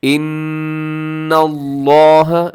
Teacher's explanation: لفظ اللہ کو موٹا کر کے پڑھنا ہے آپ نے۔ اس کی وجہ یہ ہے کہ لفظ اللہ سے پہلے، لفظ اللہ کے لام سے پہلے حرف کے اوپر زبر ہے، یعنی نون کے اوپر زبر ہے، تو ہم نے اس کو موٹا پڑھنا ہے۔